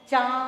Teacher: नाक और गला दोनों से आवाज आ रही है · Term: चंद्र बिंदु